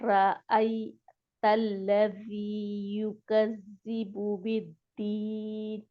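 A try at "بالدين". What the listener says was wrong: اس کی نون کی تھوڑی سی آواز آنی چاہیے.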